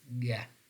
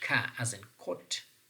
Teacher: The only difference between the two is ga is voiced and ka is voiceless.